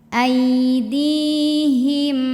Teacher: Karena setelah kasrahnya ada ya mati maka ini kita dorong kita panjangin dua harakat